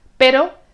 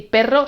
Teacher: se distinga una r el sonido suave y el sonido fuerte